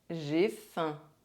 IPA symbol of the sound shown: ɛ̃